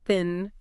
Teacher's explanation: Voiceless because there's no vibration in your vocal cords, dental because your tongue is lightly between your teeth, and fricative because there's that constant airflow creating a bit of friction. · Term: voiceless dental fricative